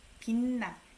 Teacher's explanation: This CH sound becomes N. Maybe because next syllable starts with N.